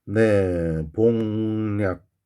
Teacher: 근데 앞에 이 기억이 뒤에 비음인 니은의 영향을 받아서 이 니은 때문에 앞에 기억이 비음으로 변화돼야 되거든요. 그래서 이응으로 지금 바뀌어 있는 겁니다. · 뒷단어의 시작이 이 야여요유이기 때문에 요 자리에 니은이 껴요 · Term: 비음화, 니은 첨가